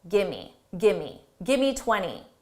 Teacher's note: Give me, we reduce these to sound like gimme